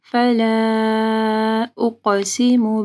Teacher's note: فلا کے اوپر دیکھیں مد ہے، اس کے بعد حمزہ ہے، 4 سے 5 حرکات کے برابر اس کو لمبا کرنا ہے۔